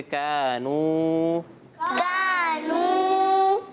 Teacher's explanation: واو ساکن سے پہلے پیش تو واو مدہ تو اس کو کھینچیں گے